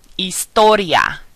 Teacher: notice that we're not pronouncing the H